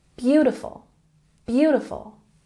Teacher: Beautiful has the emphasis on the first syllable.